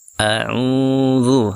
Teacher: huruf ain yang dhammah, dibaca panjang karena setelahnya ada waw yang sukun ya. A'udzu, seperti itu, dibaca panjang.